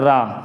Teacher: जब रा बोला जाता है तब जीभ आगे की तरफ आगे से मुड़ जाती है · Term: लुंठित